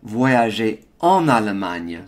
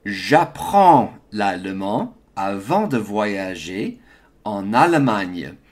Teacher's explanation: So there's a liaison on that en.